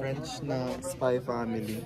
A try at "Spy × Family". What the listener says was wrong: French spy X family. You gotta pronounce the X. So pronounce it.